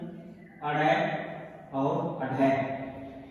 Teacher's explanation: इनका उच्चारण करते समय जो हमारी जीवा है, जीभ है, वो एकदम से झटका लगाती है। झटके के साथ ध्वनि उत्पन्न होती है। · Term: उत्क्षिप्त व्यंजन